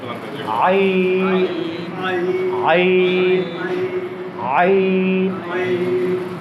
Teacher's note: জি, আইন কোত্থেকে উচ্চারণ করছি? এই যে কণ্ঠনালীর মধ্যখান থেকে।